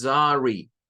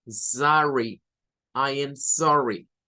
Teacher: Esta O se dice como con una A, mezclando una O con una A.